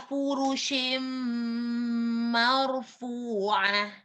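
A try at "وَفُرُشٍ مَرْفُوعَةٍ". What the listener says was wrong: Takrirnya tidak berlebih di huruf ro ya. Sekali saja. Mar, bukan mar. Tidak mar, tapi mar. Wa furushim marfu'ah.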